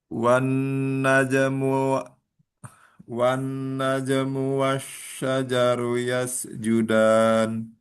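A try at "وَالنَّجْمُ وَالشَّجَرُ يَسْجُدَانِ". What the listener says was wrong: Ya, terus ditambah gunanya nun wan najmu wasyajaru yasjudan.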